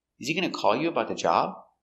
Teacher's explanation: remember to stress important words. Call, the verb, is important.